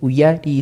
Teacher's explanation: mayor fuerza voz Entonces sería enseñar u u en la ya por ejemplo se daría la mayor fuerza en la ya